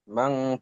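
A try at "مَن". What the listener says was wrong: মান গুন্না হলো না, গুন্না, গুন্না ছেড়ে গেছে মানে।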